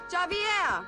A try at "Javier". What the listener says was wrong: It's Javier. It's pronounced like an H. Javier.